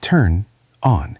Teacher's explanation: It is very hard to stop the N and then start the O. It takes a lot of energy.